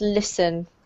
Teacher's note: This is really a silent T, so it's pronounced listen.